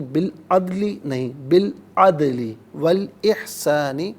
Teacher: عدلی میں دال ساکن ہے، لیکن دال چونکہ قلقلہ ہے، حرف قلقلہ ہے، تو سکون کے وقت آواز لوٹتی ہوئی محسوس ہو